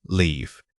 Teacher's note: The difference between these two is purely vowel length. When you say leave, your lips stay slightly spread and taut for a longer time. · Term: Long e sound, Long E sound